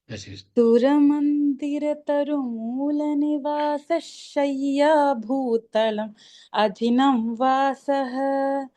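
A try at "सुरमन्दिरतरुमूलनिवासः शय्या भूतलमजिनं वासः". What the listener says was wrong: அந்த ஷையா பூதலம் அஜினம் சொல்றதுக்கு பதிலா பூதலம் அஜினம் அப்படின்னு சேர்த்து சொல்லிடலாம். அது இன்னும் பெட்டரா இருக்கும். தப்பு இல்ல, பட் இருந்தாலும் பெட்டரா இருக்கும்.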